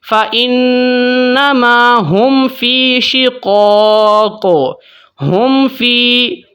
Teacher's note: غننے کے بغیر پڑھنا ہے، اخفاء کے بغیر پڑھنا ہے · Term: اظہار شفوی